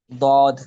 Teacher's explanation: حرف ضاد کو ادا کرتے وقت زبان کا بغلی کنارہ ناجز سے ضاحک تک بتدریج آہستہ آہستہ لگتا ہے، جس کی وجہ سے آواز میں طوالت پیدا ہوتی ہے۔ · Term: استطالت